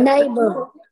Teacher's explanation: The stress is on nay.